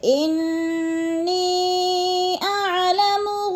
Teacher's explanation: لکم، لکم میں بھی اظہار شفوی ہے، غنہ نہیں کریں گے، ان کی نون مشدد ہے سختی سے، جمعوں کے ساتھ ہم نے ادا کرنا ہے، اور نی پہ جو ہے مد منفصل ہے، حروف مدہ کے بعد حمزہ دوسرے کلمے میں آ گیا ہے تو مد منفصل 4 الفی مد ہے، ہم نے اس کو 4 حرکات کے برابر لمبا کر کے پڑھنا ہے